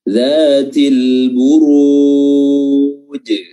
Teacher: za makhrajnya adalah ujung lidah diapit oleh kedua gigi atas dan bawah, dan panjangnya 2 harakat saja.